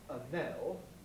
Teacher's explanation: She said a nell, and she should have said an L, and they don't sound quite the same. The N is stronger in a nell, it's at the beginning of a syllable, stress syllable. The N is much weaker in an L, where it's, in fact, in an unstressed syllable, out of the end of the syllable.